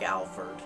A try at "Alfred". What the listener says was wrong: It's Alfred. Why do you say Alfred? The R becomes before the E. Alfred, not Alfred.